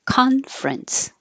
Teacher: We drop the middle E, and now it's conference